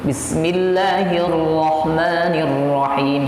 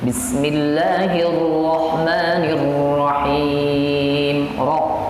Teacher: Jadi getarannya ada, cuma sedikit, tidak terlalu keriting. Tapi itu kamu kembali ke lidahnya karena terpakor biasa mungkin.